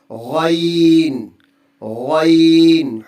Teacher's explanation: حروف حلقی کے آخر حلق سے ادا ہوگا